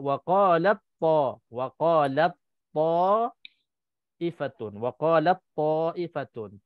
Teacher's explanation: Ta itu dah tak baca sebabnya idgham. Dah hilang, dah dimasukkan ke dalam ta. Dibaca sudah hilang.